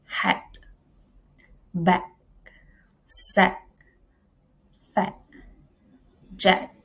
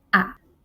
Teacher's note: A open front vowel sound articulated in the front part of the vocal track with the tongue half open in and the lips in a spread position.